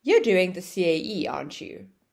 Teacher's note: aren't you is said with a falling intonation, so then it goes down at the end of the question.